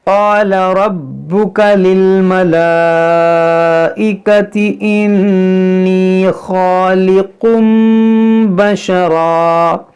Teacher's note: ہے، الف مدہ، یہاں پر دیکھیں خاص زبر الف مدہ ہے، الف مدہ کے بعد حمزہ اسی کلمے میں ہے تو یہاں پر مد متصل ہوگا